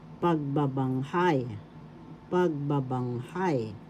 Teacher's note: The accent is in the fourth syllable